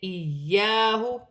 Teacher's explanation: یا مشدد ہے، جماؤں کے ساتھ ادا کیا جائے گا، الف مدہ بھی بن رہی ہے